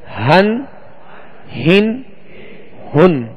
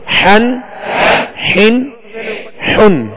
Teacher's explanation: ہا جو ہے وہ حلق کے نچلے حصے سے ادا ہوتی ہے, اور ہا جو ہے یہ وسط حلق یعنی درمیان حلق سے ادا ہوتے ہیں